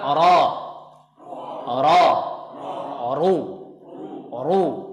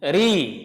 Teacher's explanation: Harusnya ra yang dhammah dan ra yang fathah ini harus tebal bacanya, kecuali nanti ra yang berharokat kasrah.